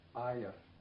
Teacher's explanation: another way to fit arya into speech is to assimilate the r to the y so then it becomes ayah